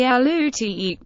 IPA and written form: əˈluːtɪk (Alutiiq)